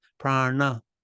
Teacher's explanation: The N sound is not on your teeth, it's on the roof of your mouth.